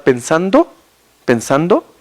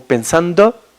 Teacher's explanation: la vocal o, por ejemplo, de los eh profesionales está más abajo y entonces está más centralizado un poquito